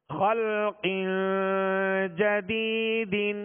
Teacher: تنوین کے بعد جیم ہے، جیم حروف اخفا میں سے ہے، لہذا یہاں پر غنہ کریں گے. اسی طرح جدیدن، یہاں یا مدہ ہے، یا مدہ کو ایک الف کی مقدار کھینچ کر ادا کریں گے.